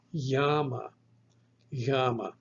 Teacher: The English G actually is a full stop, but the Greek yama is not a full stop. You actually squeeze the breath through this narrowed passageway.